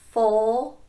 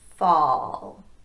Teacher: On fall, you'll go to that lowest tongue position like you did for full, but you'll also drop your jaw more. So the difference between full and fall is how much your jaw is dropping. Your tongue will go with your jaw.